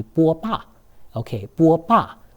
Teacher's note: Okay, so remember to pronounce that Chinese A always as an ah, even if it's in an unstressed syllable.